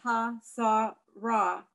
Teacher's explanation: The line down is because the emphasis is on the next to last syllable, not the last one